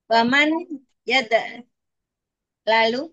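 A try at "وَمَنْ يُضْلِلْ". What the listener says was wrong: Ya-nya dhamma dari 4 huruf. 4 huruf dia, Om.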